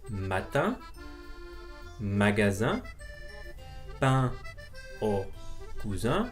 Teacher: the N at the end is not pronounced, nor does the E sound like a normal E. And it's because we nasalized the last E. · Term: nasal sound